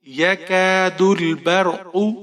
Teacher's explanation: یکاد البرق، یہاں پر آپ نے کاف کو ایک الف کے برابر کھینچنا ہے. دال کو لام کے ساتھ ملائیں گے، با کو را کے ساتھ ملائیں گے